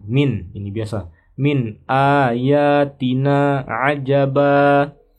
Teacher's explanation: min nun sukun bertemu alif, ini adalah izhar ya. Maka dibaca jelas min, tidak ditahan min. Ya, jangan ditahan.